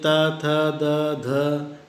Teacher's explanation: हिंदी के त, थ, द, ध दंत ध्वनियाँ हैं। इसमें जीभ की नोक ऊपरी दंत पंक्ति को स्पर्श करती हैं। · दांत की सहायता से उच्चारित ध्वनियाँ दंत कहलाती हैं। इसमें जिह्वाग्र या जीभ की नोक से सहायता ली जाती है।